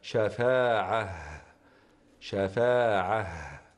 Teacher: لا ينبغي ان نوقف بالفتح او نقف بالفتح على العين بل ينبغي ان يوقف بالهاء الساكنه لان التاء المربوطه تبدل كما هو معلوم في حال الوقف هاء